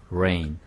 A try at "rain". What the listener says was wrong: E 발음이 조금 더 깨끗하게 rain. Rain. 아까는 E 발음이 없었어. 그래서 rain, rain 이렇게 들렸던 거예요. 근데 이 모음을 없애버리니까 rain, rain 이렇게 들린 거예요.